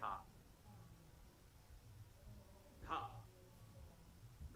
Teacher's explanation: धा में हल्का हा आता है